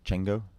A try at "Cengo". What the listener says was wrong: Nope. It's a Zulu name. You've got to do a click. Engo. Engo.